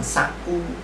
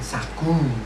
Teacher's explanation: Perbedaannya juga sangat mencolok pada suku kedua kata antara fonem K dengan G.